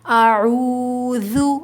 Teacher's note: ذال کو نرمی سے ادا کریں گے، زبان تھوڑی سی ہماری دانتوں سے باہر آئے گی۔